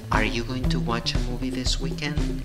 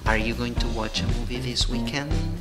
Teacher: La entonación para arriba porque se contesta sí o no.